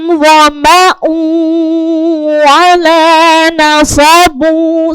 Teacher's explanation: idgham bigunna itu mendengungnya masuk ke dalam hidung